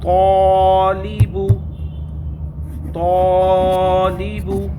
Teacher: یہ ہمیشہ پر پڑھا جاتا ہے نا. تو یہاں پر ہم الف کو جو ہے پر پڑھیں گے کیونکہ الف سے پہلے پر حرف ہے